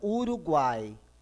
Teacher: Primeiro é uma semivogal, depois uma vogal, depois outra semivogal. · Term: tritongo